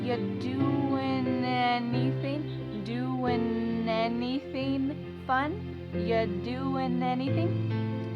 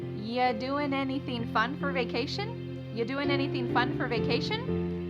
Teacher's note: We link together doing because we're going to drop the g. It ends with the sound, the n sound. And then the next word, anything. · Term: linkings